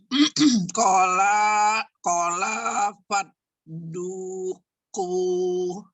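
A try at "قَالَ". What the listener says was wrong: Sebentar. Kofnya yang panjang. Ko-nya panjang. Kola fadu. Yuk.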